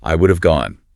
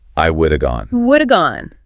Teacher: The word have has been elided down to just that reduced vowel sound, A, the schwa.